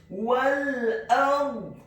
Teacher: Wal ard, kata ard, huruf alif atau hamzahnya dibaca tipis fathah 1 harokat, huruf ra-nya dibaca sukun, isti'la wa tafkhim, bergetar dan tebal. Karena sebelum huruf ra yang sukun adalah huruf yang harokatnya adalah fathah.